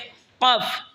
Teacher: জিহ্বার আগা থেকে একটু আগে বাড়িয়া তার বরাবর উপরে তালের সঙ্গে লাগে